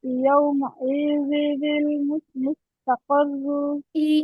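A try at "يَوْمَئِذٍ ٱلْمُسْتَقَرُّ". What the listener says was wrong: ইতে টান হবে না, ইয়াউমাইযিনিল ইয়াউমাইযিনিল ইয়াউমাইযিনিল মুস্তাকাররু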